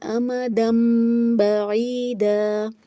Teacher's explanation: تو یہاں پر دیکھیں تنوین کے اوپر چھوٹا سا میم بنا ہوا ہے اور آگے حرف اقلاب یعنی با آ رہا ہے، تو یہاں پر اقلاب کا قاعدہ اپلائی ہوگا، تنوین کو میم سے بدل کر پڑھیں گے، امدن نہیں پڑھا جائے گا بلکہ امدم بعیدا، دم ساتھ میں غنہ کی آواز بھی آئے گی